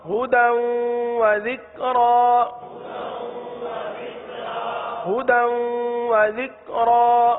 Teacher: کیونکہ تنوین جو ہے دال پر جو دو زبر کی تنوین ہے، دال کی تنوین کو ہم واو کے ساتھ ملا رہے ہیں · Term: ادغام